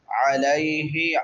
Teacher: عین حروف حلقی میں سے حلق سے ادا ہوگی، وسط حلق سے، حلق کے درمیان سے